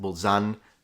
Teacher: And then he said he lives in Bolzano, which he pronounced Bolzan. So once again, he's cutting off the final vowel.